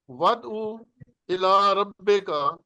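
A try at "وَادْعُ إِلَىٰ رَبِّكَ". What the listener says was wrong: ودعو. بس ودعو نہیں کہنا ورنہ واو بن جائے گی.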